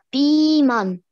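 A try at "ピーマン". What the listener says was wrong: Да, правильно, пиман.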